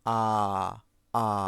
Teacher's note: এবার আ উচ্চারণ করার সময়, মানে সরি মানে আ উচ্চারণ করার সময় আমাদের জিহ্বা এ আর অ উচ্চারণ করার সময় যেখানে ছিল তার থেকে আরও নিচে নেমে আসবে, মানে একদম নিচে অবস্থান করবে। · আচ্ছা, এবার তুমি আ উচ্চারণ করো, জোরে একটা আ উচ্চারণ করো, জোরে আ, আ। দেখো জিহ্বা কিন্তু একদম নিচে আছে